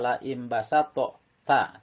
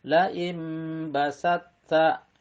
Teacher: tok qalqalahnya hilang ya. Jadi jangan dibaca la imbasatta ta, tapi langsung la imbasatta.